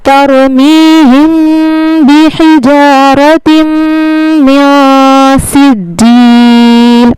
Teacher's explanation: یہاں پہ ہم نون ساکن کی آواز کو ناک میں چھپائیں گے، اب کیسے چھپائیں گے وہ سمجھ لیجئے، میاں، یہاں پہ ہم نے من نہیں پڑھنا، میاں پڑھنا ہے، اس کو کہتے ہیں تنوین اور نون ساکن کا اخفا، ٹھیک ہے، میاں، کیسے ہوگا اخفا؟